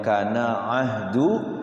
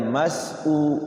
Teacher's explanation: Beda ya antara hamzah sama ain. Ain di sini di tengah-tengah tenggorokan wasul halqi, hamzah itu di bawah tenggorokan.